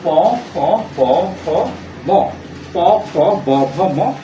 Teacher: ওষ্ঠ যোগ অধর, অর্থাৎ ওষ্ঠ এবং অধের সাথে লেগে উচ্চারিত হচ্ছে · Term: ওষ্ঠাধর ধ্বনি